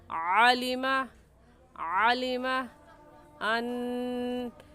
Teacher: आइन हुरूफ़ हल्की में से है, यानी उन हुरूफ़ में से है जो हलक से निकाले जाते हैं और ये हलक के दरमियानी हिस्से से निकाला जाता है। तो अलीमा कहना गलत है और हलक के दरमियान से निकाल कर पढ़ेंगे।